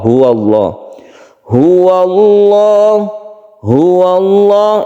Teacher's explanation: suara dari ha itu harus muncul dari tenggorokan bagian pangkal atau bawah. Pangkal tenggorokan di situ ada tempat keluarnya huruf ha.